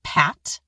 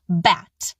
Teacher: That's voicing. The P, is voiceless, and the vocal folds don't buzz, and the B, is voiced. The vocal folds buzz.